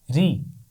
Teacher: یہ بات ہمیشہ ذہن میں رکھیے، را کو زیر کے ساتھ ہمیشہ باریک پڑھا جائے گا